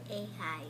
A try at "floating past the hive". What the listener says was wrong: Oh, see, were you going a little too fast there, maybe?